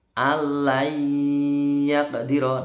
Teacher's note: qafnya mantul kecil, agak mencucu.